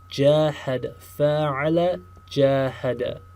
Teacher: the defining characteristic of Form 3 is that elongation, that alif after the first root letter